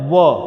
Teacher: दांतों और ओष्ठ के सहयोग से बोले जाने वाला वर्ण है व, तो व का उच्चारण स्थान है दंतोष्ठ।